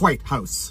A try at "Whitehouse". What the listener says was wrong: Why are you putting so much emphasis on the H?